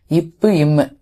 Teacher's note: மேல் இதழும் கீழ் இதழும் ஒட்ட போகுது